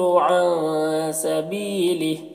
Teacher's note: یضل ضاد کو پر پڑھیں گے۔ عن کے نون میں اخفا ہوگا، نون کی آواز کو ناک میں چھپا کر پڑھیں گے